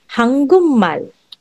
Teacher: Pag ang last syllable mo sa first syllabic block ay kiyok, and your second syllabic block begins with the nian or the miam, your kiyok will be pronounced as iyong.